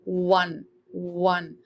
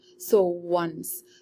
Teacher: When we are saying once, we can hear the sound of W from O.